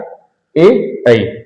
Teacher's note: कंठ तालव्य और तालु में जीभ के स्वर से बोले जाने वाले वर्ण